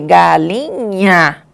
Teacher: Olha como esse nha, ele é nasal